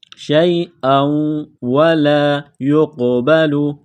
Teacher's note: شیئا و، لام الف زبر لا، شیئا ولا، شیئا ولا یقبل، قاف کو موٹا کرنا ہے، قاف ساکن ہے تو یہاں پر قلقلہ کریں گے